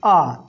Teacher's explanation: यह दो मात्रा के समय लगता है इसलिए हम दीर्घ स्वर कहते हैं